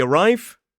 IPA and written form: əˈraɪv (arrive)